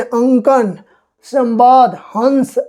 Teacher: नाक से ज्यादा उच्चारण कर रहे हैं और मुख से थोड़ा कम कर रहे हैं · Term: अनुस्वार